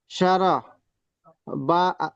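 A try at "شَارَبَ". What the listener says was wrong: যেহেতু এটা আলেম মাদ, একটু টানেন, শাহ রবা।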